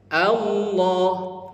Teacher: Jadi a ke lam itu Bapak Ibu sekalian dipanjangkan. Padahal enggak boleh panjang.